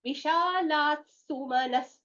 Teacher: The first visarga is getting replaced with a sakara.